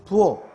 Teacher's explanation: 부엌의 키읔은 누가 없어도 발음이 부엌, 기역으로 나요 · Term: 자생적 변동